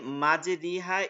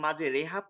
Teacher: ঝুঁকিয়ে দেয়া উচ্চারণ জের ও জবরের মধ্যবর্তী হয় তাকে এমালা বলে